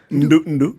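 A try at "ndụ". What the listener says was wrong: Intonation. Nduh is Nduh. The second one is the question.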